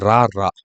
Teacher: மேல் அன்னத்தின் முதல் பகுதியை தொட்டு வருவதால் ரகரம் தோன்றுகிறது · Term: இடையின ரகரம்